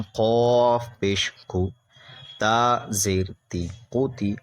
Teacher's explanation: قاف بھی حروف مستعلیہ میں سے اس لیے قاف کو موٹا کریں گے